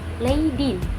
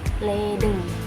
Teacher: Terjadi perubahan dari i menjadi e. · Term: perubahan vokal